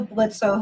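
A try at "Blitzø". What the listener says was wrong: O. It's the Blitz without the O.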